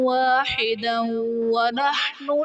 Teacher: واحدا ونحن میں دال پر دو زبر کی تنوین، تنوین کے بعد حروف یرملون میں سے واو آ رہا ہے تو یہاں بھی ادغام مع الغنہ کا قاعدہ ہوگا، یعنی تنوین میں ہم غنہ کر کے پڑھیں گے